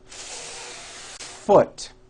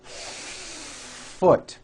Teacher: these are friction sounds and are not that loud so we stretch these sounds out a little bit so they can be clearly heard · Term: F sound